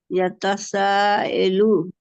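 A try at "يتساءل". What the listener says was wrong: ये लो नहीं है।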